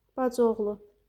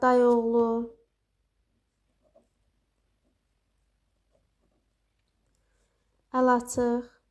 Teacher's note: birinci sözün sonundakı, yəni bu qoşa saitlərdən birincisi tələffüzə düşür və heç bir uzanma halı da baş vermir